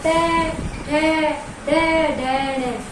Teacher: जो दांतों से ऊपर उठी हुई जगह है, इस पे हमारी जीभ टच कर रही है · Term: मूर्धन्य